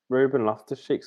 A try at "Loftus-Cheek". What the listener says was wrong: You said that really weirdly. You put all the emphasis on the wrong part of his name. went Ruben Loftus-Cheek. You went Loftus-Cheek.